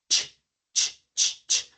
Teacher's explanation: El sonido de CH, que es cuando decimos el verbo watch, o sea, la pregunta de pronto es, ¿cuál es la diferencia entre el sonido de SH y CH? Cuando tú tienes un sonido de CH, como es este caso, es como con un pequeño estornudo al inicio.